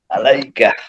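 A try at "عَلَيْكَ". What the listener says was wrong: মাশাআল্লাহ, আলাইকা।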